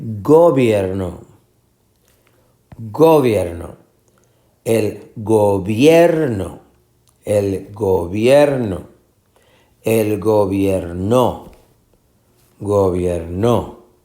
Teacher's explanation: es la sílaba tónica la del medio